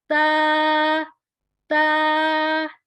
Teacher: با تا۔ اس میں زبان کی نوک اوپر والے 2 دانتوں کی بیک سائڈ پہ مسوڑوں کے ساتھ ٹچ ہوگا